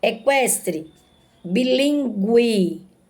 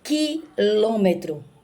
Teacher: quando você pronuncia com lentidão, mais lento, você observa que a letra U, ela está sendo sim pronunciada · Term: pronúncia da letra U